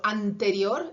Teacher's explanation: Luego tienen Ns dentales como por ejemplo anterior, esa N está tocando los dientes también